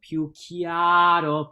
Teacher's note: it's almost as if you were going chiao, and then you're just throwing in a tiny flip of the tongue